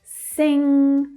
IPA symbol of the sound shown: ŋ